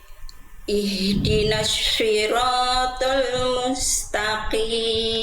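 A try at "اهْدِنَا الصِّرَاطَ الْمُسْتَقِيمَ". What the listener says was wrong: Oke, jangan shi. Ya, jangan syiroto, tapi sli. Sliroto, sli. Jadi huruf sin itu dilafalkan kayak S biasa. Si, gimana S biasa. Nah, jangan jadi shi, enggak, tapi sli. Tetap berdesis, dia nggak jadi bersiul. Bukan jadi sli.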